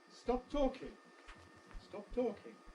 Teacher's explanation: So again, we have this masking effect. The first plosive is masked by the second.